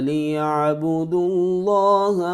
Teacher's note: لام سے پہلے لفظ اللہ کے لام سے پہلے پیش ہے لہذا اس کو پر کر کے پڑھیں گے